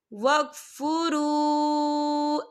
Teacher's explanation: وجہ النہار وَاکْفُرُوا، یہ دیکھیں وَاکْفُرُوا، یہاں پہ واو مدہ بھی ہو رہا ہے، واو ساکن ہے، واو ساکن سے پہلے پیش ہے اور اس پر چھوٹی سی مد بھی ہے، تو ہم اسے 4 حرکت کے برابر کھینچ کے پڑھیں گے